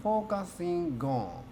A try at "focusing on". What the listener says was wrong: So the last one is not actually a gone, but a ngon. Ngo. Ngo. Ngon. Okay, so focusing on.